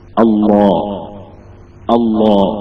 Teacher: അല്ലാ എന്നൊക്കെ അവസ്ഥ എത്തി എന്നിട്ട് അതിനെ തഫ് ആക്കിയിട്ട് അള്ളാ എന്ന് പറയുക വെറും അല്ലാ എന്ന് നമ്മൾ പറഞ്ഞ അവസ്ഥ ഉണ്ടല്ലോ അതിനെ തഫ് ആക്കുമ്പോൾ അള്ളാ എന്നതാവും